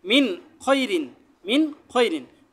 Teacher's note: পরে ইজারের খরফ আছে নুন সাকিনের পরে ইজারের খরফ আছে এজন্য নুন সাকিন টাকে স্পষ্ট করে গুন্না ছাড়া স্পষ্ট করে পড়তে হবে